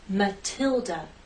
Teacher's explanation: Stress on the second syllable, Matilda. The T is stressed, so we have a true T sound